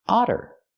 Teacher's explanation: We see the double T making the fast D sound because they're between vowels.